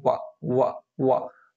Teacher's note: दंतोष्ठ, दांत और ओष्ठ 2 चीजों से मिलके